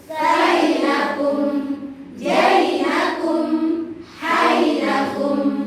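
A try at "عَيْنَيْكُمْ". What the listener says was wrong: kumnya belum ditekan, kumnya belum ditekan. Masih tawasud saja.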